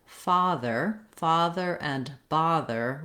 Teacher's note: the letter O in this word says the ah vowel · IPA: /ɑ/